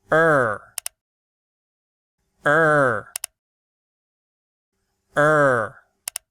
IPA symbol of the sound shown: ɘr